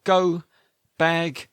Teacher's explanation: back of the tongue, touches the soft palate then releases.